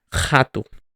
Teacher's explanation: In Portuguese, it is very guttural at the beginning of the word.